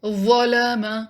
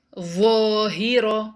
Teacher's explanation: زبان کی ٹپ باہر رہے گی اور یہ ہیوی لیٹر ہے تو زبان کا پچھلا حصہ منہ کی چھت کے ساتھ لگانا ہوگا